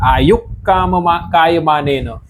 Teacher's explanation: પણ કંઠમાં બેઠેલો છે તો આ બે વચ્ચે ક્લેસીસ થાય એટલે વિસર્ગ છે ને પૂરે પૂરો ઉચ્ચારણ ન થતા અડધો જ ઉચ્ચારણ થાય છે અને ક એનું સ્થાન લઈ લે છે